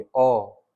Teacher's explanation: ऐसे ही आपका एक मध्य स्वर आएगा, तो आप अ बोलिए, अ, देखिए बीच से आवाज आ रही है अ, ठीक है। तो जीव का मध्य भाग इसमें यूज होता है